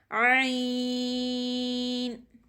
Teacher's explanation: हलक के first part से यानी जो मुंह की साइड हमारे गले का हिस्सा मुंह की तरफ आता है वहां से ही पढ़ा जाता है। जहां से हम हा को पढ़ते हैं वहां से ही आइन भी रीड होता है।